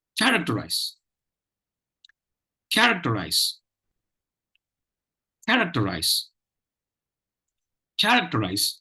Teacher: there is only one stress syllable in this word, the 1st syllable, care. Ek and ter are not stressed.